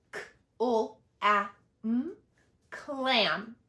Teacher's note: K, ul, a, So because even though these are blends together, they still are saying k and ul. They don't work together to say an entirely different sound.